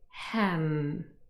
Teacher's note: Both lips closed, and we form the nasal